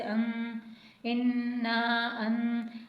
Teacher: نون ساکن کے بعد زا ہے تو یہاں پر ہمیں غنہ بھی کرنا ہوگا